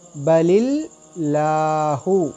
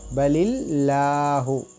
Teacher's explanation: लफ्ज़ी अल्लाह के लाम से पहले जो हरकत है वो ज़ेर की है, इसलिए हम इस लाम को बारीक पढ़ेंगे, अल्लाह के इस्म के लाम को।